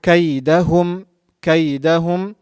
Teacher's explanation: Kaf, the back tongue touching the hard palate on the top.